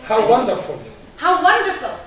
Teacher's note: when you are surprised you are using the falling intonation